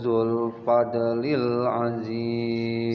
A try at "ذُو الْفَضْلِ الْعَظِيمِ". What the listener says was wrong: Sekali lagi hu-nya pendek, wallahu dzul langsung.